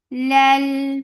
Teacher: For Kasra, give E sound attached with Lam. Lam will get sifat tawassut, and tawassut is medium flow sound.